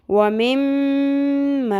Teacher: मीम के ऊपर तशदीद है, यहाँ पर आपने नाक की हड्डी में आवाज़ को ठहराना है, गुन्ना करना है।